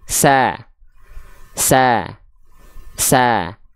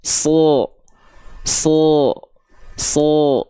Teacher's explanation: Sin huruf tipis vokal a dibuka mulutnya sambil senyum sa sa sa kalau sad Huruf tebal dia enggak senyum ya